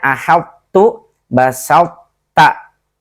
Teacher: huruf ta walaupun idgham tapi to-nya tetap muncul tebalnya